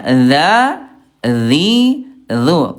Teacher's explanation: Ujung lidah disentuhkan dengan ujung gigi seri atas. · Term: huruf dzal